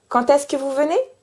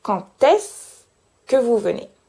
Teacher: je fais une liaison entre le quand et le est, et que la liaison sonne comme un T, même si c'est un D.